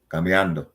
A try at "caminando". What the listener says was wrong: You know, there's no buh in there. Caminando.